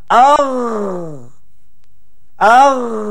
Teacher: tengok perhatikan kepada grafik anakak lihat bagaimana kita tekan huruf ini suara tekan kepada hujung halkum yang dekat-dekat anak tekak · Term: huruf gain